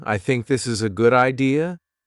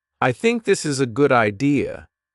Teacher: let your voice fall at the end of the sentence. This tells the listener, I am sure, I am not afraid. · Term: falling tone